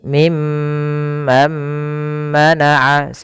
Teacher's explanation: Mimman mana ditahan dalam lafal mimnya menahan juga dengan bunyi mnya sepanjang dua harakat. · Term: idgam ghunah